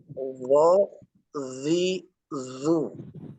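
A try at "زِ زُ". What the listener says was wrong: Masih terdengar desis. Masih terdengar ada udara ya.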